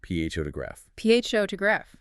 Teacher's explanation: the heavy stress is on the first syllable. You physically push more air out of your lungs on that first sound.